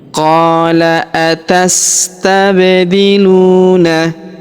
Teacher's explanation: huruf qo kita panjangkan dua harakat karena terdapat alif di depannya